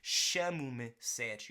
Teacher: This is European Portuguese, and that there in me is that unstressed e that we're gonna see in many Portuguese, European Portuguese words that end in e